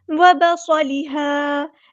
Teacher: صاد ہمارا heavy letter ہے، پورا ادا کریں گے، صاد میں سیٹی آئے گی